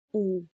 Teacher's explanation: आप खुद उच्चारण करके देख लीजिए साथ में, ऊ क्या हो रहा है होंठ थोड़ा सा बाहर आ रहा है और गोल हो जा रहा है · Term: वृत्तमुखी